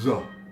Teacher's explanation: This letter is generally pronounced th, a very thick American TH sound. However, sometimes it's also pronounced as a very thick Z sound, especially like in Palestinian dialect.